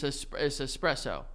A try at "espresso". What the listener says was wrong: Why are you adding S's before the word even begins? Okay, but you're saying es espresso. That's not, but like you see how that's wrong. You don't get to go es espresso like you're hammered.